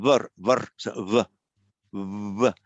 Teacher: lips almost touching, but not quite. It's between a w and a v.